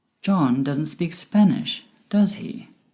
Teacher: My voice went down at the end with does he? Because I am sure he doesn't speak Spanish, but it would be great if you could confirm this with me. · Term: Falling intonation